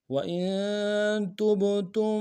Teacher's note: ساکن کے ساتھ ملانا ہے، نون ساکن میں غنہ کریں گے، تا کو با کے ساتھ ملانا ہے، با حرف قلقلہ میں سے قلقلہ کریں گے